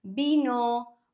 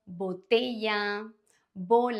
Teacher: the B for ball in English or the V for victory they are pronounced the same in Spanish both have this soft B sound like in the word boy